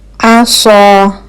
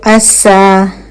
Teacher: صاد موٹا پڑھا جانا تھا، سین پتلا، تو عصا کا مطلب ہو جائے گا امید ہے کہ.